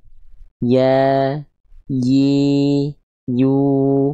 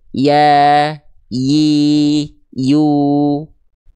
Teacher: Nah, lihat tengah lidahnya. Ya. Dia hanya mengangkat tanpa menyentuh ke langit-langit di atasnya. Ya, dia tidak menempel tapi hanya menyentuh. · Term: huruf ya